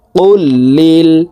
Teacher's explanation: আল্লাহ শব্দের আগের হরফে জের আছে তাই এই লামকে লা অর্থাৎ পাতলা ভাবে পড়তে হবে